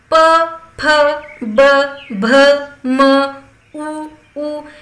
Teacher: हे शब्द ओठांचा एकमेकाशी संपर्क आल्याशिवाय आपण उच्चारूच शकत नाही, म्हणून यांना औष्ठ असं म्हणतात.